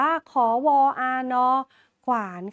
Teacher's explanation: อ่านออกเสียงขไข่กับวแหวนควบกันค่ะ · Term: คำควบกล้ำแท้